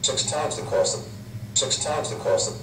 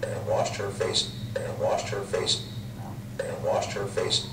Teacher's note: as you get towards pittsburgh the vowels have merged for those speakers